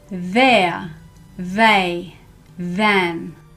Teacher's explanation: you should feel your voice box vibrate your throat vibrate because you use your voice box to make this sound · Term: voiced th sound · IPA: /ð/